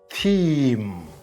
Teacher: Short E, he, see, and long E, theme. Here you have to prolong the E sound slightly, theme. So you see, E has 3 basic vowel sounds.